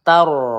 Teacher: ro sukun sebelumnya berharakat fathah ya. Kita baca dengan tebal